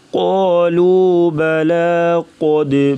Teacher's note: بلا کی لام کو باریک پڑھیں گے